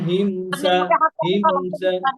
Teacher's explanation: মিম সুকুনের পরে সিন আসছে, গুন্না নাই